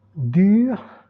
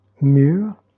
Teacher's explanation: Labializzate, les deux lèvres, et un arrondi plus ou moins important. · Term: palatali labializzate